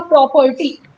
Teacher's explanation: पर को हमने हल्का सा बोला है, इसमें हमें ज्यादा साउंड, बहुत ज्यादा बल नहीं लगाना पड़ा बोलने में · स्ट्रेस मीन्स हमें यहाँ पे ग्रेटर आर्टिकुलेटरी एफर्ट चाहिए, हमें बहुत ज्यादा जोर लगाना पड़ रहा है प्रो बोलने में, तो ये हो जाएगा स्ट्रेस्ड सिलेबल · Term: अनस्ट्रेस्ड